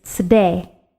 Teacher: you barely heard the sound of the Shin. Actually, in this case, it's a Sin with a schwa underneath it.